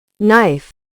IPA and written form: naɪf (Knife)